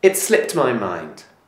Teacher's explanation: the final D of slipped is pronounced more like a t sound